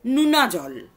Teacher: পশ্চিমা রাঢ়ীতে ওকার থেকে হর্ষৌকারে পরিণত হচ্ছে।